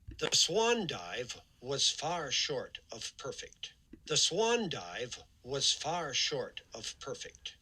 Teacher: he really does emphasize swan here. You can see the big rise in F0 there that indicates that he's accenting that syllable.